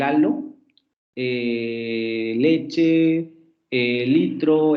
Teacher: la aproximante lateral alveolar sonora del halo, leche, litro